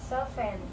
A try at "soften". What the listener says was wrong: Walang T, ha? Parang silent T.